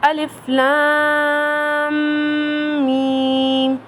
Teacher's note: پڑھتے ہوئے لام کو لمبا کرنا ہے اور میم پر غنہ کرنا ہے۔ میم کو پڑھنے سے پہلے غنہ کرنا ہے، مطلب ناک سے آواز نکلتے وقت لام کو میم سے ملانا ہے۔ · میم کو پڑھنے سے پہلے غنہ کرنا ہے، مطلب ناک سے آواز نکلتے وقت لام کو میم سے ملانا ہے۔ میم کی جو آواز ہے اسے غنہ کہتے ہیں۔